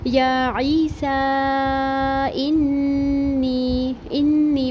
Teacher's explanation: نون مشدد ایک الف برابر پڑھیں گے، غنہ کریں گے، اس کے بعد یا مدہ بھی لازمی پڑھیں گے۔